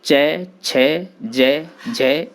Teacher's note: इनके उच्चारण में जिह्वा मुख के ऊपरी चिकने भाग यानी तालु का स्पर्श करती है।